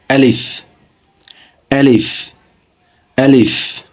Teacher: উচ্চারণের স্থান কণ্ঠনালীর শুরুতে স্পষ্ট করে আ, লিফ।